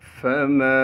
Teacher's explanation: فما، فا کو بغیر کھینچے پڑھیں گے۔ میم کے بعد الف مدہ ہونے کی وجہ سے میم کو 1 الف کے مقدار کھینچیں گے۔